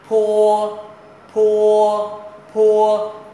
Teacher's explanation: ta cảm giác có một cái luồng hơi thì chữ này gọi là âm bật hơi